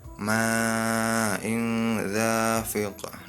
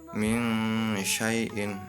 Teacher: Nah, ketika ada nun mati bertemu tanwin, nun mati atau tanwin bertemu dengan huruf ikhfa ini, maka dibaca samar antara jelas dan dengung. Ya, maksudnya samar itu tidak jelas dan juga tidak dengung.